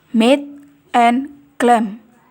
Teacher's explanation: Oral passage is blocked by closing the lips or bilabial.